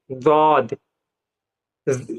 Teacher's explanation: दाद जो है जबान की करवट और ऊपर की दाढ़ों की जड़ों से अदा होता है